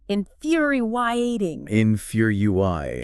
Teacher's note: emphasizes that second syllable stress · And she points out the foo is like few, and there's almost this tiny extra vowel glide between the I and the A. So it's like in-few-w-re-e.